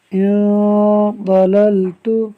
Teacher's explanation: یہاں نون ساکن کے بعد صاد حروف اخفاء میں سے ہے، لہٰذا اخفاء کا قاعدہ ہوگا یعنی نون ساکن میں غنہ ہوگا۔